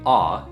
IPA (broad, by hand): ɑ: